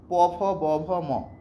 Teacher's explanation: এই প, ফ, ব আমরা ঠোট দ্বারা উচ্চারণ করছি। ঠোট লাগছে। শ্বাসবায়ু বের করতে গেলে ঠোটটা লাগছে। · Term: অষ্ঠ ধ্বনি, ওষ্ঠধ্বনি